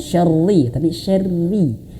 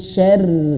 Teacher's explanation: Kenapa kok bisa tipis? Karena dia berharokat kasroh gitu ya. Jangan syarri, bukan syarri tapi syarri, disenyumkan.